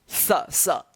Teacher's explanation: दोनों दांत के बीच में जब जीभ आता है तब इसका उच्चारण होता है स। देखिए स दोनों दांत के बीच में है ना मेरा जीभ आ रहा है। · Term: दंत स